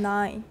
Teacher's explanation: the soft palate is down so that air can go out through the nose the sound produced is a nasal stop sounds of this kind